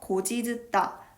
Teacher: 어간 곧과 전미사 이가 결합하는 과정에서 구개음화가 일어나고 연음이 되어 고지듣다 라는 발음이 만들어집니다